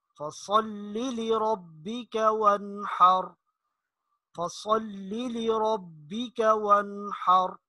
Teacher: وانحر، اس کے اوپر غنہ نہیں کرنا، یہ نون ساکن کے بعد حروف حلقی میں سے ہا آ رہا ہے، تو اس کو جلدی سے پڑھیں گے، وہی جو اظہار کا قاعدہ ہم نے پڑھا ہے۔